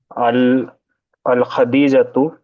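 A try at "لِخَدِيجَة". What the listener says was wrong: لا، لام زیر لی ہے، کیوں لی خدیجہ تو؟ لام زیر لی ہے نا، حرف جر ہے نا، تو حرف جر کیا کرتا ہے؟ جر دیتا ہے، حالت جر میں کیا اعراب ہوگا؟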